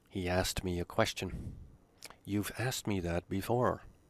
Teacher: the k is not pronounced in regular sentences